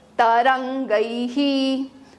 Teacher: ऐ के बाद जभी भी विसर्ग आता है तो विसर्ग का उच्चारण ह और ऐ का लास्ट साउंड ऐसे बनता है अ और इ से